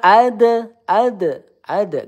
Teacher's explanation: Ma ad dal sukun qalqalah sugro memantul.